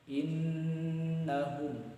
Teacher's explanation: ketika bertemu dengan huruf nun bertasydid maka ditahan sebanyak 2 sampai 3 harokat